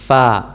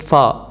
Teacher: दांत का ऊपर वाला किनारा होता है वो आके लगता है नीचे वाले होंठ के अंदरूनी साइड पे फ़ा। बाहर नहीं रखेंगे, बाहर रखेंगे फ़ा, वो और तरह का बन जाएगा फ़ा।